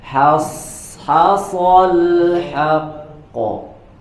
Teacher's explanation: tipis di huruf H, tebal di huruf Shad. Hasal haqqo.